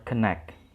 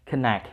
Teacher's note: Nah, di sini yang harus ditekan adalah connect. Connect, suku kata kedua.